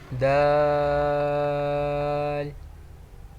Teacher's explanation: اس کا مخرج تھا زبان کی نوک اور اوپر کے دانتوں کی جڑ سے ادا ہوتا ہے